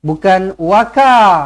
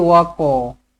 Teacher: Bukan waka tetapi wako. Kalau kita sebut ka, dia akan jadi huruf kaf. Sedangkan dekat sini bukan huruf kaf, sini huruf qaf.